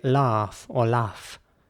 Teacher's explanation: in british english people would say laugh or laugh basically once again with an ah sound